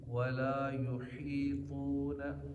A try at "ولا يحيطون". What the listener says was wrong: طا یہاں موٹا ہے، ولا يحيطون، يحيط، اس لیے عین حا یہ ایسے الفاظ ہیں جن کا ہر جگہ خیال رکھ رہے ہیں کہ یہ صحیح نکلیں، اور یہ تب صحیح ہوں گے جب ہمارا پہلا سبق صحیح ہم پڑھیں گے کہ پہلے سبق کو کس